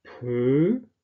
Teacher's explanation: Dann haben wir die Behauchung bei pö.